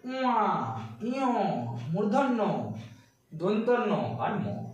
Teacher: এগুলি উচ্চারণের সময় কি হচ্ছে? দেখো নাক আর মুখ উভয় দিকেই শ্বাস বায়ু বেরিয়ে আসছে।